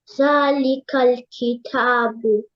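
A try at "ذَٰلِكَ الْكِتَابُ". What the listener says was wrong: But give a little bit more time to these long vowels.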